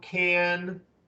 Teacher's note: can has a falling tone, can, when we say it fully